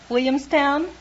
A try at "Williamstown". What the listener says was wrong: What happened to the L's? You knocked the L's out of that word. Can't you say Williamstown?